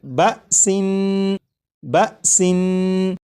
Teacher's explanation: اس لفظ کو جب آپ نے پڑھا جیسے بسن، تو سین کو پڑھتے ہوئے آخر میں جو نون ہے، نون کی ادائیگی کرتے وقت آپ نے غور کیا ہوگا کہ زبان تالو سے لگی